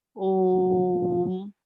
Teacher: ऐसे वर्ण जिनका उच्चारण करते समय ह्रस्व स्वर और दीर्घ स्वर की अपेक्षा ज्यादा समय लगे, ऐसे स्वरों को हम कहेंगे प्लुत स्वर।